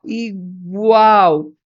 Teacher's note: o L de igual tem som de U, né? Por isso que a gente tem um tritongo